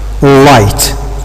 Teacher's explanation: This is its place here. The diphthong is found before the voiceless sound, which is t, light.